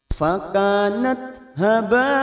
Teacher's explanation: huruf tak sukun memiliki sifat hamas, maka pada saat disukun bunyinya fakanat haba.